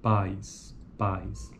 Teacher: ocorre um movimento contínuo e gradual da língua entre duas posições articulatórias vocálicas, de A até I · Em tal articulação, os dois segmentos a e i ocupam uma única sílaba. Veja a característica então do ditongo, está numa única sílaba.